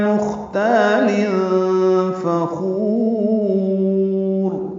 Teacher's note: مختال خا ساکن پہ ہمس ہے، تا الف مد ہے، 2 حرکات لمبا ہے، تنوین کے بعد فا آنے کی وجہ سے اخفا ہے، فا کو جلدی ادا کریں گے.